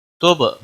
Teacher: تب با ساکن پر قلقلہ ہوگا